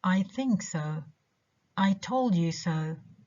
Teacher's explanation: so the mom in this case so is not stressed for in these two sentences the two verbs think and told are the only stressed words